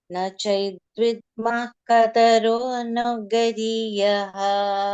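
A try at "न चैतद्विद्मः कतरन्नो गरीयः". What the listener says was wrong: Kataran, not kataron. Kataranno gariyah. Na chaitad vidmah. Na chaitad vidmah kataranno gariyah.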